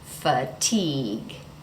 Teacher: Another word is fatigue. The second syllable, teague, is the syllable that is stressed. So that T does not change.